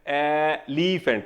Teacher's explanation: ਮੈਂ ਸਿਰਫ ਪਹਿਲੇ ਅੱਖਰ ਤੇ ਐਲੀਫੈਂਟ ਦਾ ਪਹਿਲਾ ਅੱਖਰ ਬੋਲ ਕੇ ਦੇਖੋ, ਸਿੱਧਾ ਕੰਠ ਤੋਂ ਆਉਂਦਾ ਹੈ, ਕੋਈ ਵੀ ਤੁਹਾਡਾ ਲਿਪਸ, ਟੰਗ, ਟੀਥ ਨਹੀਂ ਹਿਲਦਾ ਹੈਗਾ